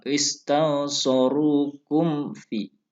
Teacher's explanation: Wa inistansorukum fiddin dibaca jelas mimnya karena ini idhar syafawi. Idhar itu artinya jelas, syafawi itu artinya bibir. Jadi pelafalannya menyatukan dua bibir.